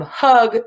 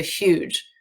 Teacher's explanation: And if a G is followed by an I, an E, or a Y, it changes from the g, hard sound to the j, soft sound of G